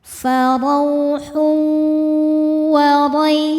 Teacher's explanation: Karena ada tanwin dhammah menghadapi huruf wau. Cara bacanya tanwin dimasukkan ke wau disertai bunyi dengung. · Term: idgham bighunah